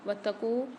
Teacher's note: تا کے اوپر مشدد آ رہی ہے، یہاں پر واو کو تا کے ساتھ ملا کے پڑھیں گے